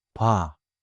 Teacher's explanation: >> The same thing happens with bwah becoming bwa. Boh plus ah merges into bwa.